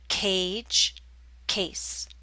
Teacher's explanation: the a in cage is longer because it's followed by a voiced consonant j in contrast the a in case is followed by a voiceless consonant